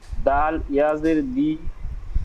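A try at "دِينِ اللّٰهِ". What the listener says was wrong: দি টান হবে না একটু? তাহলে আপনি টান দিলেন কই?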